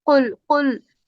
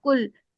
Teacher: هو اللہ احد، قل موٹا کاف، موٹا قاف پڑھا جاتا ہے، زبان کی جڑ اوپر تالو سے لگ رہی ہے اور پھر اس کو پر کرنا ہے